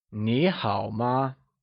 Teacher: nihill ma which literally means you good remember that in Niihau nee is spoken using the second tone